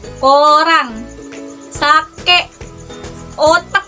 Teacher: Termasuk dorsovelar karena yang dihasilkan di bagian pangkal lidah dan langit-langit lunak.